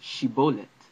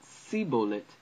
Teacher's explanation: they couldn't pronounce the sh sound for shin